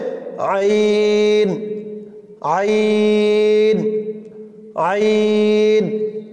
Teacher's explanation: তারপর আইনের মাখরাজ, কণ্ঠনালীর মধ্যখান হইতে উচ্চারিত হয়, অর্থাৎ গলার মাঝখান থেকে এই আওয়াজটা আসবে